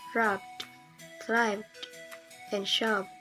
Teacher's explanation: If the ED is preceded by a voiced consonant sound such as B or V, it should be pronounced as a voiced D.